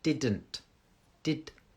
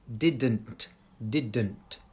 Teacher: my tongue is touching the roof of my mouth just behind my front teeth